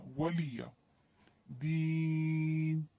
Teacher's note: کیونکہ دال یا سے دی یا مدہ، وقف کی صورت میں مد عارض للسکون، اس کو ہم 4 حرکت کھینچ کے پڑھیں گے